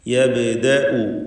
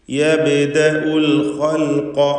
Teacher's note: ബാഇൻ്റെ സുക്കൂൻ ഖൽഖല സുഗ്റ നൽകി ഹറക്കത്ത് പോലെ വ്യക്തമാക്കി ശബ്ദം ചലിപ്പിച്ച് ഉച്ചരിക്കണം.